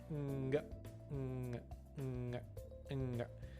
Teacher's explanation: that final G sound happens when you release the sound and your tongue like pops back up in your mouth.